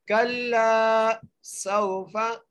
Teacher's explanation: सीन को सीटी के साथ वाव से मिलाना है, आगे फा के ऊपर जबर है।